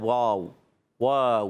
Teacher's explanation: वाऊ की अदागी होठों की गोलाई से। दोनों ओठ जब गोल करते हैं तो अदा होता है वाव।